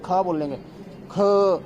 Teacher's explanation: तो तेजी से हवा बाहर निकलेगी। इसे महाप्राण बताया गया हिंदी के अंदर